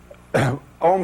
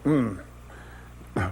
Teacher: in infinite in Transcendent in The Voice void Ki om pronounced starts in the back of the mouth then fills the mouth cavity oo and closes at the lips M